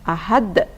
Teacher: qolqolah kubro dibaca memantul dan jelas